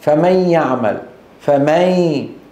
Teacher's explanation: اذهب من الميم الى الياء مباشره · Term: الادغام